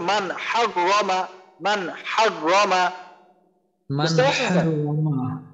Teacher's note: Normal আমরা যেরকম পড়ি নুনের উচ্চারণ করে ওই রকম ভাবে কোন রকম গুণনা করব না, স্পষ্ট করে পড়ব। এখানে তাহলে আমাদের হা আসছে হা, তাহলে আমাদের তো মান হাগ রমা, মান হাগ রমা, মান হাগ রমা।